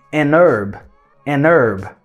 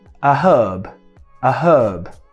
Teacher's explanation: Erva em inglês se fala herb. No inglês americano é herb. O H, ele é silent.